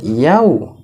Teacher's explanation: Kalau ini tanda, ini adalah bacaan lin. Ini adalah bacaan lin, maka ya-nya harus dibaca lembut